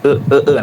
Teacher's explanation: Ee ee cara artikulasinya yaitu ee lidah pada posisi netral di tengah ya, tidak di bawah, tidak di atas. Bibir netral, tidak bulat, tidak tersebar. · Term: vokal madia tengah